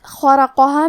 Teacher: کلمت خرقہا میں خا کو ہم حلق کے اوپر والے حصے سے پڑھیں گے